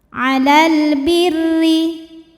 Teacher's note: Huruf ra dibunyikan secara tarqiq sebab barisnya di bawah, maka dibacanya tipis.